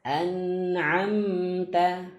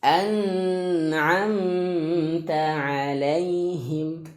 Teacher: Mengalir sedikit suaranya. Ya, jadi ada gunnah sedikit ya, ada gunnah sedikit ya.